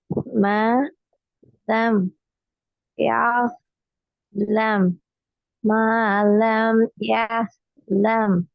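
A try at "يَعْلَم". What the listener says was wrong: சேர்த்து ஓதுறது பிழை. சேர்த்து ஓதக்குள்ள லம் என்று தெளிவா வருது. எஸ் அல்ல. எஸ் கண்டு வாரதும் பிழை. ரெண்டு வாரதும் பிழை.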